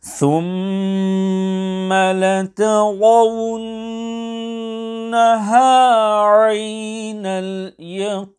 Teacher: Ra contains a fatha, hence it should be pronounced sufficiently full mouth.